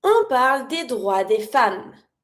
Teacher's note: Femme with the A sound, never pronounce the S.